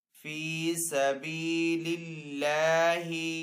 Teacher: اللہ عز و جل کے نام کو یہاں پہ باریک پڑھیں گے کیونکہ پہلے والے حرف کے نیچے زیر ہے